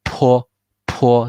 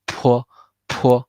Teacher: And then the last one, 坡, the P with a lot of air, right?